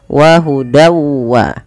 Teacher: Pada lafal wa hudan wa, di sini masukkanlah bunyi tanwin pada lafal dan, awalnya dan. Karena ia bertemu waw, kita masukkan tanwinnya kepada huruf waw. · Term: idgham bi gunnah